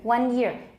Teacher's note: make sure that final n is actually pronounced with alveolar contact